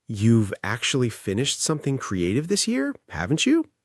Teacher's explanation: Rising intonation, voice goes up, means you're genuinely asking.